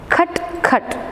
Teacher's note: But k comes along with aspiration, along with a puff of air. So it is cut.